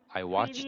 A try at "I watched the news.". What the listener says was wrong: Because when you actually try to blend the sound of these two, it sounds like this. I watched the news. should be watched the news. Try to pause between watch and the.